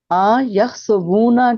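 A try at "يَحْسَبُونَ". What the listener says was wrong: آ کو لمبا نہیں کرنا، یحسبون،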